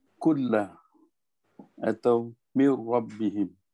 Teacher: Jadi di sini hukum ini idgham bila gunnah, maknanya idgham kamil, idgham sempurna, kita masuk tanpa dengung. Jadi bila kita sebut pun nun mati ataupun tanwin pun dah tak ada, dah terus masuk ke dalam huruf lam dan ra.